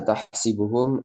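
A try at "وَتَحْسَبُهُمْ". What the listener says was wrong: tahsabuhum. Sini di fathah. tahsabu. Tahs. Tahsabu sini di fathah.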